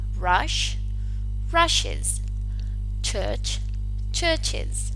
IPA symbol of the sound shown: ɪz